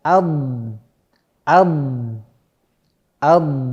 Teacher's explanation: Jadi keluar suara tambahan yang agak sedikit dipanjangkan sehingga dia menghasilkan suara tambahan untuk menyempurnakan huruf tersebut. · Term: sifat istitolah